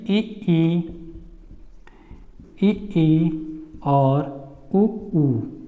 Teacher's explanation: जब हमारा मुंह का द्वार सिकुड़ता है यानी कि बंद होता है तो उसको हम बोलते हैं संवृत